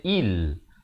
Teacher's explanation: Ramai baca il, sepatutnya il. Hamzah baris bawah bunyi i, bukan bunyi a.